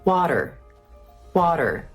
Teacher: It's a very soft D. Some people also say that it sounds similar to a soft R sound